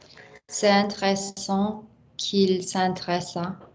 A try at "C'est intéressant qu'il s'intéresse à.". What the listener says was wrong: Don't give me any micro pauses.